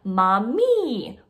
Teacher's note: the vowel is altering so these are words like mami where the first vowel is the ah and the second vowel is that e but it's the same consonant over and over again